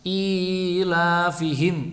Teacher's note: i sama la-nya panjang, fi-nya pendek, ilafihim, begitu.